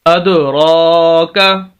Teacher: جب یہ 5 حروف ساکن ہوں، ساکن جیسے یہ دال ساکن ہے تو وہاں پر قلقلہ ہوتا ہے. اد را کا، را کو کھینچنا ہے، کھڑی زبر ہے